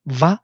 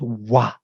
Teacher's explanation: dental labial, where with lower lip I touch upper teeth, va, or with 2 lips I create wa, where I don't touch teeth. But in Sanskrit, they are not distinguished.